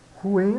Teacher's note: U, I, né? Sons vocálicos separados, pronunciados em sílabas separadas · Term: hiato